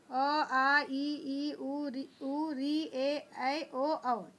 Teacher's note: जब हम इन वर्णों का उच्चारण करेंगे तो हमारे मुंह से जो श्वास वायु जो सांस निकलता है वो बिना किसी रुकावट के मुंह से बाहर आता है, यानी स्वर जो है स्वतंत्र होता है, इसके उच्चारण में किसी अन्य वर्ण की सहायता नहीं लेनी पड़ती है। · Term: स्वर वर्ण